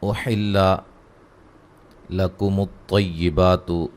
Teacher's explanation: طا کو خوب موٹا ادا کریں گے